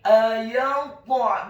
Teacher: huruf ainnya ditekankan keluar dari tenggorokan bagian tengah dhammah 1 harokat.